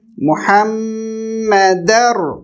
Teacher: میم کے اوپر تشدید ہے، شدہ ہے، جس کی وجہ سے ہم میم کی آواز کو بھی یہاں پر کچھ دیر کے لیے روک دیں گے